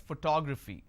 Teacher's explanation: in this case I stress on the second syllable that is what word stress is all about